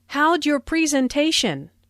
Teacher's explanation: Notice the contraction for how did sounds like how'j and your sounds like your.